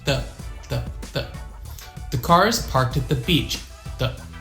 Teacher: The. So my tongue is just on the back of my front teeth